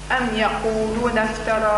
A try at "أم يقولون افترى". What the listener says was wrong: يقولون أكلت المد أم يقولون يقولون